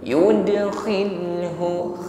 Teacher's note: Ringan saja. Yudkhilhu, kho-nya tetap ada gesekan di tenggorokan, ada bunyi dengkur, namun posisinya kasrah, maka lebih ringan pengucapannya. Kadar ketebalannya itu lebih lemah daripada ketika fathah. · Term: tafkhim nisbi